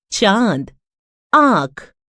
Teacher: आ, यह अनुनासिक है। इसका उच्चारण मुख और नासिका दोनों से होता है